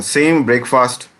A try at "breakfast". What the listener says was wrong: It's pronounced as breakfast. Yes, not break fast.